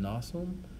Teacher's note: The final M in Latin, as in nasum, was actually pretty light. It was kind of more of a nasalization of the final vowel. That's sort of as you say it through your nose.